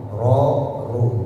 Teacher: Cara bacanya monyong, ro, ru, bibirnya monyong, ya. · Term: tafkhim atau tebal